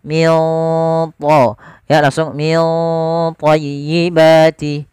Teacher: ikhfanya langsung ke huruf tha, ditebalkan, maka ikhfanya agak tebal